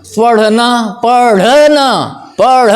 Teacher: इसमें जीभ आपकी ऊपर जाती है और ढप से नीचे कूद जाती है। जैसे तालाब के पास जाओ, मेढक बैठा हो, आपकी आहट पाता है तो छलांग लगा के डब से गिर जाता, यही आवाज़ उसमें आएगी। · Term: उत्क्षिप्त